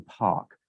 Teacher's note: The aspirated plosives, for example, in the word, if I were to say the word park in American English or British English, I would probably say it with a bit of an aspiration going park, with the H sounding out right after the P